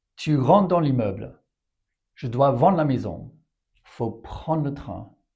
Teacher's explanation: you just lightly pronounce the D or T to suggest the rest and avoid that r sound in there